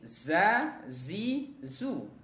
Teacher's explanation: kondisi makhrajnya adalah ujung lidah kita bertemu dengan ujung gigi seri bagian bawah ya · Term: huruf za